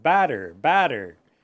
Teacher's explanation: And you'll notice that we relax the T's, we say batter, ba. So try to remember that with that A sound, you want to open your mouth. And it's longer too